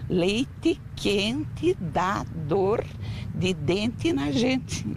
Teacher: e tem uma outra variação acaba sendo trocada pela letra i são poucos os brasileiros que pronunciam o e assim bem falado principalmente no final das palavras como aqui na região de curitiba